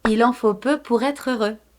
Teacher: The TR are pronounced together with the E sound after, even though they belong to two different words. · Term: enchaînement